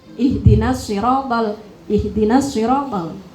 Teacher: Kemudian kalau makhraj ini ee yang saya dengar hak-nya kurang dalam sedikit, Mbak. Hak itu kan ditenggorokan yang paling bawah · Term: makhraj ha